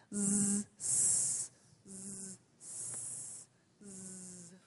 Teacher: you're letting the tongue have a little tiny space for the air to come through. You're not stopping the air, right? It's coming through, so you're making a little noise for the tongue to have a little tiny space.